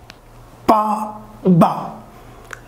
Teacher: these two sounds, pa and ba, these two sounds produce with the help of lips. Look here, complete closure of the lips.